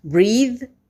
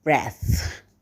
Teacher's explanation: let's have a look at these words breathe breath breathe breath breathe is voiced the other one is voiceless